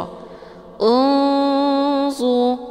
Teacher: cara bacanya nunnya disamarkan kemudian siap-siap menuju ke huruf d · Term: Ikhfa ausat, ikhfa awsat